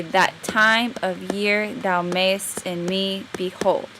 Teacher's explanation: iambic itself is the arranging of the stress on the second word of each pair